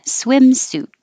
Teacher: you don't have to say the T, you can just hold your tongue in the T position